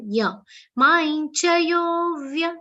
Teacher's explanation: Maincha, ma anuswar will be pronounced like a ya consonant.